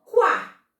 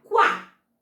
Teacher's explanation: Eu passo o correndinho pelo U e falo A, quá. Perceberam? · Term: semivogal